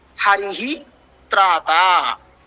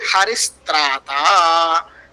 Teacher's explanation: Hence the visarga will be replaced by sakaraha.